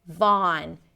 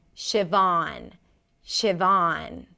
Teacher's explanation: Ah, as in father, or you can even round the lips a little bit, and then an N.